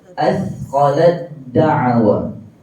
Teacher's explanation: maka yang dibunyikan tetap huruf yang kedua iaitu huruf Dal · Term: idgham